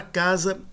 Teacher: Na palavra casa, nós percebemos que o primeiro A, que é tônico, ele é pronunciado de modo um pouco mais longo do que o segundo A